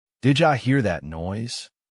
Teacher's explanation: Did ya hear that noise? The D sound from did and the Y sound from you merge, creating a new, fluid sound. · Did you frequently collapses into didja.